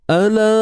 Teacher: Ala panjang 4 atau 5 harakat. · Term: Mat jaiz munfasil